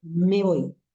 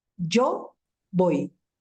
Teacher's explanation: Me, como es una palabra inacentuada, se agarra de voy para poder ser perceptible y se pronuncia en un solo golpe.